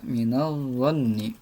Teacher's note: Jadi huruf lamnya ini tidak jelas lagi sudah karena sudah melebur kepada huruf dha. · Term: alif lam syamsiyah